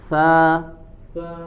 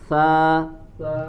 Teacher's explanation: sa, mengalirkan angin, sa, karena dia memiliki sifat hams.